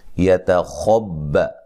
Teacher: خوا کو موٹا با کو باریک، ٹھیک ہے، تا کو بھی باریک پڑھیں گے